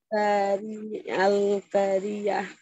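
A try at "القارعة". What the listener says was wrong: আল কফটা মোটা হবে আল কারিআহ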